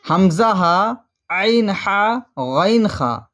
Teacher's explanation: شروع حلق سے حمزہ ہا، درمیان حلق سے عین ہا، آخر حلق سے غین خا ادا ہوتے ہیں۔